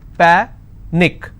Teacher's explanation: I will stress on pa and it's pronounced as panic